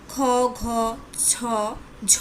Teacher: প্রত্যেক বর্গের দ্বিতীয় ও চতুর্থ ধ্বনির উচ্চারণকালে বাতাসের চাপের আধিক্য থাকে বলে এদের মহাপ্রাণ ধ্বনি বলে